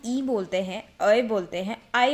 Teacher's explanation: ए और आई बोलते हैं तो जो हमारा जो मुख है यानी मुंह है वह कम खुलता है